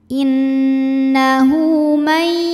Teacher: Karena ada hak dhamir yang diapit 2 huruf hidup, huruf setelahnya bukan hamzah, bukan a, bukan i, bukan u ya. Maka hak dhamirnya ini kita panjangkan 2 harokat. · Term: mad silah qasirah